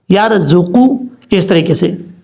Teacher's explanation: را ساکن سے پہلے زبر ہو تو را پر پڑھا جاتا ہے، یہ پر کی علامات میں سے ہے. زا سیٹی کے ساتھ پڑھا جائے گا. قاف حروف مستعلیہ میں سے پر پڑھا جائے گا. · قاف حروف مستعلیہ میں سے پر پڑھا جائے گا. قاف پیش قو، قاف پیش قو نہیں پڑھنا، یرزقو نہیں پڑھنا، یرزقو، اس طریقے سے.